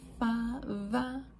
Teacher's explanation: And then going over to labial dental. So now instead of two lips, it is lips and teeth.